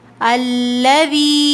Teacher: یہاں پر مد ہے اور یا مدہ بھی ہے، ٹھیک ہے، تو اس کو 4 کاؤنٹس کھینچیں